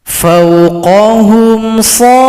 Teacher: Ini adalah mad lazim mustaqal kalimi, panjang 6 harokat atau 6 ketukan baru tasydid. Kemudian di sini cara berhentinya nun disukunkan, berikan bunyi vokalnya.